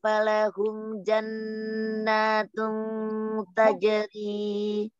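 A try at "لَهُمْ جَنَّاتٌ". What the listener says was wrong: Lahum umi, bukan falahum, lahum.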